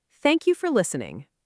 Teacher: your voice falls down clearly at the end, listening. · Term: falling intonation